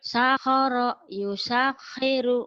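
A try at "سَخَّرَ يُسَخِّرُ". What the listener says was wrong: Itu tasdidnya disamber. Sakhara yusakhiru. Ayo samber. Sakhara yusakhiru. Kurang tasdidnya, kurang nyamber. Sakhara yusakhiru. Samber. Kayak orang marah, kayak orang kesel.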